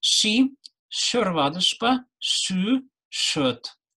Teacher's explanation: Согласный ш в сочетании с и, е, э, ю, ю звучит смягченно, но не переходит в щ. Звук щ в языке отсутствует.